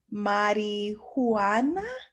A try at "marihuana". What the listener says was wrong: Marijuana. So the H is silent.